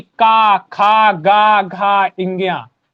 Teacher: का से तो आपका कंठ ही रहेगा, तो का वर्ग का उच्चारण स्थान कंठ होता है।